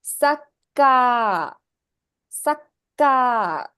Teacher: Here you find ka is both stressed and elongated